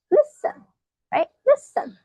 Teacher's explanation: Because we do not stress the second part. So, we say listen, right? Listen. The stress is in the first syllable. Uh on the first first syllable. · The stress is in the first syllable, on the first syllable. So we just, we don't stress the second syllable.